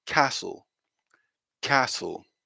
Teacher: and we're missing any kind of t sound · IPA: /ˈkɑːsl/